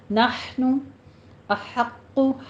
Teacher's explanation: ہا وسط حلق سے ادا کیجیے ، نحنو نہیں ہے، نحن احق ہا وسط حلق سے ادا